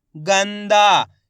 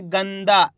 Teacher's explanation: तेजी के साथ उच्चारण निकालना है, गंदा, इस प्रकार से पूरा ना का उच्चारण नहीं निकालना, तेजी के साथ आधा ना का उच्चारण निकालना है